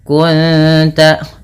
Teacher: menyamarkan bunyi suara Nun kepada ta dan ditahan bunyi dengungannya dua harakat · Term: Ikhfa Hakiki